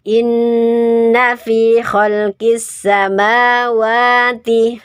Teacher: Mat tabi'i, ada alif jatuh setelah fathah. Mat asliyah, 2 ketukan. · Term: mad tabi'i